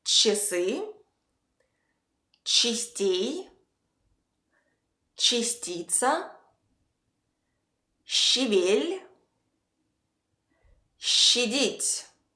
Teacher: In all these examples, we say I instead of A. And it's not something unclear between A and I. No, it's a very clear, regular E sound.